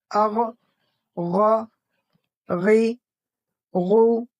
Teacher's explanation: حرف غین کا مخرج بالکل وہی ہے جو ہم نے حرف خا کے لیے سیکھا تھا، یعنی ادنائے حلق، حلق کا سب سے اوپر والا حصہ جو منہ کی طرف ہوتا ہے، اسے عربی میں ادنائے حلق کہتے ہیں۔ جب ہم غرغرہ کرتے وقت حلق کے اوپری حصے سے ہوا کو نرمی سے رگڑ کر نکالتے ہیں تو غین ادا ہوتا ہے · غین حروف مستعلیہ میں سے ہے، اس لیے اسے ہمیشہ موٹا پڑھا جاتا ہے